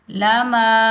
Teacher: الف مدہ کو ہم ایک الفی مقدار میں کھینچ کر ادا کریں گے